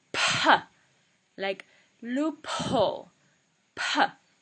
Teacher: Then we have Mahaprana, so it's pa with a lot of air.